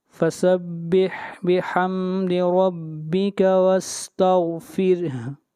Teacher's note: فَسَبِّحْ بِحَمْدِ رَبِّكَ وَاسْتَغْفِرْهُ إِنَّهُ كَانَ تَوَّابًا، یہاں ایسے بھی پڑھ سکتے ہیں، فَسَبِّحْ بِحَمْدِ رَبِّكَ وَاسْتَغْفِرْهُ، اگر یہاں پر وقف کریں گے تو ہا کی حرکت گر جائے گی اور ہا ساکن ہو جائے گی